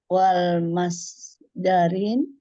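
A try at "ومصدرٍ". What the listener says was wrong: masdarin. Nggak usah pakai lam. Wa masdarin.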